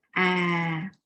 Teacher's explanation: it is long and down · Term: down tone